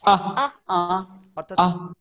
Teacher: এটা চেহারা এরকমই, চেহারা এরকমই, কোনো মাঝখানে টান হবে না, জাস্ট লম্বা। এই সাউন্ডটা হবে দ্রুত কিন্তু বড় আ